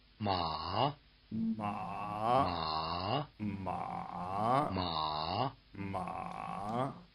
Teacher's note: It's relatively easy to distinguish between the high tone and the low tone since they contrast in contour as well as in pitch. The high tone is level as well as high and the low tone is dipping as well as low.